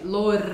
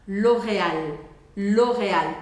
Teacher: em francês não você deixa sua língua relaxada e vai usar como se fosse um ar saindo pela garganta